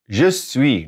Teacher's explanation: not saying that S at the end, consonant at the end, we're not going to pronounce it.